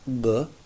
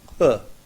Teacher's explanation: In one case, the voice box continues, B. In the other case, it stops and starts, H.